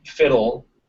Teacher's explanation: so yeah because you can you can get like fiddle without without a schwa between the flap and the L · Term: syllabic L